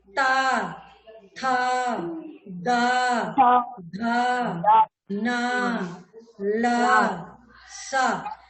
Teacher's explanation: ता वर्ग ला, ता वर्ग का मतलब ता वर्ग में जितने लेटर हैं, ता, था, दा, धा, ना और ला और शा, इतने अक्षर को बोलते समय दांत हमारे, जीभ हमारे दांतों से टकराती है